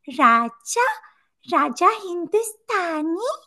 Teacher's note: what is this horrible breathy thing you're doing it's very Marilyn Monroe esque